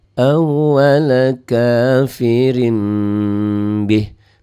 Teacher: Ini mim ini artinya bunyi n-nya, bunyi nunnya, bunyi nun mati berubah menjadi mim mati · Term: iklab